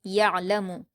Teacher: افلا یعلم، یا پر حرکت ہے عین پر جزم ہے تو یا کو عین سے ملائیں گے، حلق سے ادا کریں گے، لیکن عین ساکن پر قلقلہ نہیں کریں گے ، لام پر حرکت جلد پڑھیں گے، میم کو بھی جلد